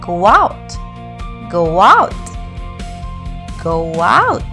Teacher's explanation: You might hear a faint W sound like go out, go out, go out. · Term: intrusion